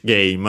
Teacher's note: the accent is on the first mora